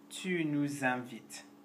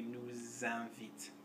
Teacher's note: And before a vowel sound, tu nous invites. Nous doesn't change, but you are going to hear the S since it's next to a vowel sound.